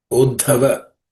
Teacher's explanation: in this compound consonant or conjunct consonant, the second letter is aspirated.